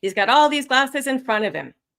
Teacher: Notice the falling intonation right at the end.